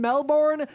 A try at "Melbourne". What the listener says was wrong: Just if you want to pronounce Melbourne correctly, Imagine it's MELBIN. Forget that R. Forget the OU.